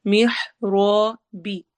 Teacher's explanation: را کو موٹا پڑھیں گے اور الف مدہ بھی کریں گے